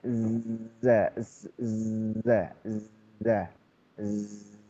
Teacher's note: Maka huruf Zai ini dia terusnya semestinya terus mengalir